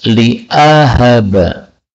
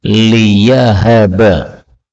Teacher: Ini hamzahnya boleh diganti ya menjadi liyahaba, tetapi terjemahnya tidak berubah.